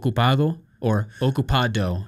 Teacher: the tongue goes more to the teeth, not to the alveolar ridge. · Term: Spanish D